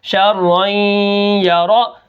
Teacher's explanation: را جو ہے وہ یا کے ساتھ مل کر پڑھی جائے گی، اور اس کے اندر غنہ بھی ہوگا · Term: ادغام